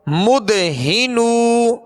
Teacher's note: ہا کو ابتدائے حلق سے ادا کریں گے